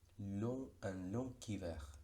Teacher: la G se pronuncia como K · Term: liaison